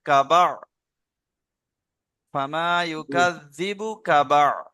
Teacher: একেবারে কাটা হচ্ছে এখানটাতে ধরে এখানটাতে কাটা ধরে নেবেন কাবা কাবা একেবারে কা টান নেই বাও টান নেই